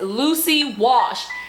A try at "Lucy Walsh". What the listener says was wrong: No, you said wash. No, you said wash. I'm telling you, you swallowed the L.